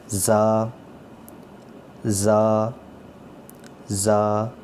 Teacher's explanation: یہ تیز سیٹی کی طرح اس کی آواز آنی چاہیے. زا زا زا.